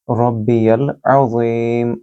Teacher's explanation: عین کو بھی گلے سے بولیں گے اور ذی کو لمبا کریں گے کیونکہ یہاں یا مد ہے